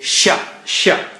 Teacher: So middle of the tongue touches the palate or roof of the mouth, and you say Sha, Sha. And again, don't use the edge. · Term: Sheen